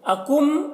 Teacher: میم کو ظاہر کر کے جلد پڑھیں گے جیسے ہم تم کی میم کو پڑھتے ہیں۔ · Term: اظہار شفوی